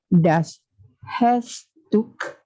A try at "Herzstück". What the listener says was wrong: Remember the R. Try the roll the R if possible.